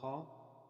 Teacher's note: The sound ha in high or hello is voiceless